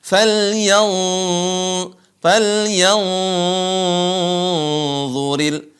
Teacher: bertemu dengan d faly faly il huruf nun bertemu dengan do menyamarkan suara Nun mendengungkan suara Nun ke tempat makhraj D Di mana tempat keluar huruf d ujung lisan ketemu dengan ujung